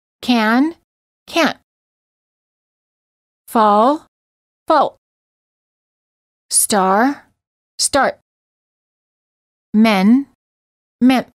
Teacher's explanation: They sound almost the same, except the second word ends with a T. Notice how in the second word, the final held T interrupts and shortens the previous consonant.